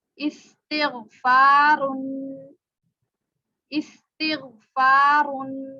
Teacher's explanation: یہاں پہ سیٹی کی آواز نکلے گی، سین میں سیٹی